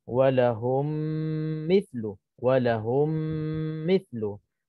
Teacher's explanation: kita masukkan mim mati ke dalam mim yang berikutnya yang berbaris itu dan kita kena dengung 2 harakah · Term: idgham mithlain saghir